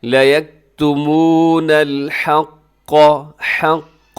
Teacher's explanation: لا یکتمون الحق، یہاں قاف ہے اور قاف کو ذرا اعلیٰ درجے کے سے موٹا کیا جاتا ہے